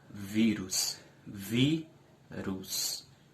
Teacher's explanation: Vi é a sílaba mais forte e ela é a penúltima. Rus é a última, mas não é a sílaba mais forte, não é a sílaba tônica, então não pode ser uma palavra oxítona. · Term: paroxítona